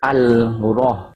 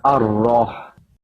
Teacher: It's called idgham syamsiyah, where you jump over the lam. The lam is not pronounced. But because of the lam, the hamzah wasal will have a fathah on top, not the kasra or the dhamma.